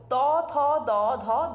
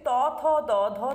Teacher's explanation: জিউহার অগ্রভাগ এগিয়ে এসে দন্তকে স্পর্শ করছে অর্থাৎ জিউহার অগ্রভাগ এবং দন্তের মধ্যে উচ্চারিত হচ্ছে ত থ দ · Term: দন্তন্য ব্যঞ্জন